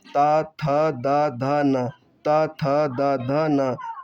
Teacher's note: जिन वर्णों का उच्चारण करते समय जीभ का अग्रभाग हमारे ऊपर के दांतों को स्पर्श करता है उन्हें हम दंतीय व्यंजन कहते हैं।